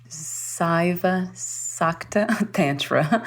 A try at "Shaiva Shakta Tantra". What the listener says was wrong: But you're reading from the diacritics. So when the S has a little accent over it in Sanskrit, it's pronounced as an SH. So it's actually Nandu Shaiva Shakta Tantra.